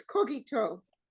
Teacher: You emphasize the last syllable, similar to Hebrew.